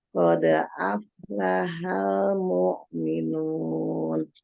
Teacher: Jangan dijedah qalqalahnya, kemudian lamnya dialirkan, lam sukun.